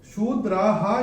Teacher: जो स आधा दिख रहा है वो स आधा का जो उच्चारण होगा वो होगा विसर्ग।